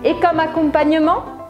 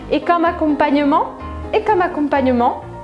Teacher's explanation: preste atenção na entonação da frase. Et comme accompagnement? Ela sobe.